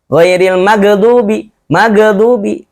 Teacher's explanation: Ghain itu termasuk huruf yang memiliki sifat rokhawah. Mengalir.